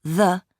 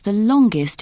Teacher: We say the in superlatives with a weak sound, the, when the following adjective starts with a consonant. We say the ending est with a schwa sound, ust.